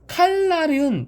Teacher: 앞에 리을이 있으니까 뒤에 있는 니은이 리을로 바뀌는 유음화가 이러한 거구나.